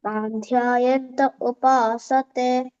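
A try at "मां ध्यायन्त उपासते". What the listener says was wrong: ఓ మాకు దీర్ఘం మాంధ్యాయంత ఉపాసతే మామ అని తీసుకోవాలి ఇక్కడ అంతే మహాప్రాణాలు కొంచెం చూసుకోవాలి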